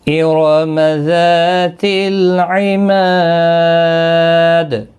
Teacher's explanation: الم تر کیف فعل ربک بعاد ارم ذات العماد، را پر پڑھا جائے گا، ذا الف مدہ ہے، ما الف مدہ ہے، دال ساکن ہوگا وقف کی صورت میں، وقف بالاسکان ہوگا، دال پر قلقلہ بھی ہوگا